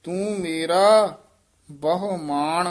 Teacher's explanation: ਨਾਣੇ ਨਾਲ ਬੋਲ ਬੋਲਣਾ ਮਾਨ ਨਹੀਂ ਕਹਿਣਾ